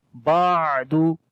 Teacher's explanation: On the ain we make tawassut quality like the moderation sound. Little bit soft sound here.